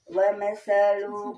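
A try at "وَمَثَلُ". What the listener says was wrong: Pendek wa masalu kalimatin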